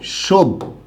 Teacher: সেখানে দুইটা ভ হবে না, প্রথমটা অল্প প্রাণ হবে আর পরেরটা মহাপ্রাণ হবে